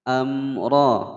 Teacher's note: Amra ada mim sukun bertemu ra ya, dibaca jelas.